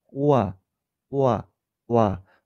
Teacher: 이중모음 와가 소리나는 과정을 마찬가지로 나누어서 잘라서 생각을 해보면 오에서 아로 가면서 난다는 걸 알 수 있습니다. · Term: 반모음